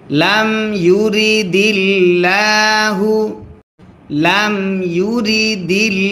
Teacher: আল্লাহ শব্দের লামের ডাইনে জের যদি হয় আল্লাহ শব্দের লাম তখন পাতলা করে পড়তে হয়